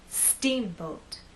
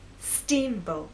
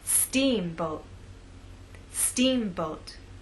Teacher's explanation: our voice will be higher at the beginning and lower in the second part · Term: stressed part